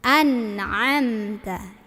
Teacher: Ini ain dari tenggorokan tengah.